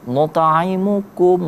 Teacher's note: Maka kita dibaca jelas. Nut'imukum langsung gitu. Jangan didengungkan. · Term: Izhar syafawi